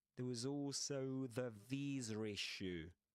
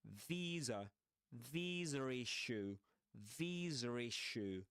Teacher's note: This is called intrusive R, you know, because it's not in the spelling. You can't see it there.